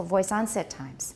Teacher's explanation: And onset gets a tonic stress, that's why it's higher.